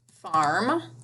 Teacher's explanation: R, you hear it in the middle of the word. The consonant M shuts off that R sound.